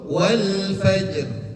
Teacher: Mau itu di depan, mau itu di tengah, seperti yang contoh pertama, mau itu di akhir, tetap namanya roh yang berharkat kasroh itu dibacanya tipis